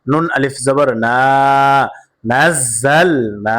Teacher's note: জবরের বাম পাশে কাল আলিফ মাদে হরফ, আর মাদে হরফ হইলে এক আলিফ টানিয়া পড়তে হয়, ইহাকে মাদ্দে তবাই বলে।